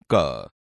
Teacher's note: ક વ્યંજન કંઠ માંથી નીકળે છે અને ઓછા પ્રાણ વાયુ ની જરૂર પડે છે તેથી ક એ અલ્પપ્રાણ છે તેવી જ રીતે ખ વ્યંજન કંઠ